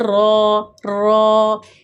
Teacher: را کے اوپر زبر، آگے وہ الف، اور را پہ جب زبر ہو پیش ہو تو را کو ہم موٹا پڑھتے ہیں